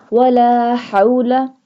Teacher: ہا حلق کے درمیان والے حصے سے ادا ہوتا ہے